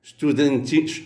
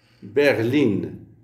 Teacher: En allemand, le suffixe in est toujours inaccentué. La voyelle est donc brève, comme la préposition in.